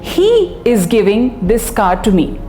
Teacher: if the emphasis is on he the meaning becomes he is the one giving the car and nobody else